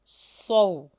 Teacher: سواد کا مخرج سیٹی کے ساتھ نکالیں